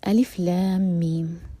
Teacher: لام کو ہم 6 حرکہ لمبا کھینچیں گے اور میم 6 حرکہ لمبا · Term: مد لازم